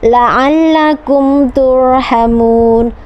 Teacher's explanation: ini juga izhar syafawi jelas terang di bibir